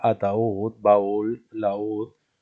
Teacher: Si la separamos en sílabas, encontramos la primera vocal fuerte átona y la segunda vocal que le continúa débil tónica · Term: hiato